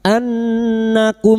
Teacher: nun yang bertasdid gunah musyadadah kita dengungkan selama tiga harakat Anakum mim sukun bertemu gain.